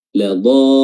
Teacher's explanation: Yang awalnya hanya dhalun 2 harokat, namun karena ada tasydid di huruf lam, maka dia dipanjangkan menjadi paling terpanjang dalam mad, yaitu 6 harokat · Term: mad lazim